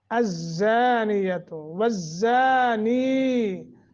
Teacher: زا آگے الف، 1 الف کے برابر مد